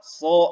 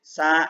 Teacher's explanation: Bedanya kalau son itu tebal ya, kalau sin tipis. Hati-hati ya, jangan sampai menebalkan huruf sin, karena kalau ditebalin dia akan menjadi huruf sod ya.